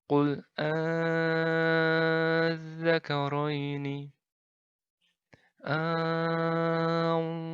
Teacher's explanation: Nah, cara membacanya bagaimana? Yaitu dengan cara dipanjangkan 6 harokat. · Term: mad faraq